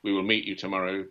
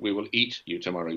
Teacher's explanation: We just removed the first consonants of a word, remove the M.